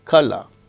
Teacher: In received pronunciation RP of England, r is not pronounced when it occurs in word final position